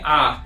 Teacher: हम लोग बोलेंगे आ, तो मुख क्या होगा? पूरा खुलता है। ठीक है, तो जैसे आ यहाँ पे, तो इसको विवृत स्वर कहा जाता है।